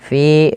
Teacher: fi 2 harakat karena ia mad tabi'i, kasrah bertemu ya sukun